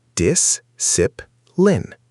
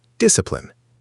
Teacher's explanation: The stress is on the first syllable. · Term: word stress